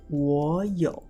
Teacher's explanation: When we have the 2 low tones together, it is really hard to pronounce. Therefore, we'll put the first low tone to a rising tone